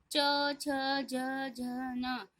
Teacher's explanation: च बोलोगे आप तो हमारा जीभ तालु को स्पर्श करेगी। जीभ है जो अपने आप ऊपर वाला हिस्सा है ना हमारा तालु, उस पे टकराएगी। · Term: तालव्य